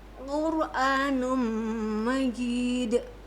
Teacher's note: dibaca tafhim karena ro sukun ini huruf sebelumnya didahului oleh huruf berharokat dhammah